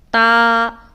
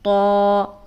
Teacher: تا کو ہم باریک ادا کرتے ہیں اور تو کو ہم موٹا کر کے ادا کرتے ہیں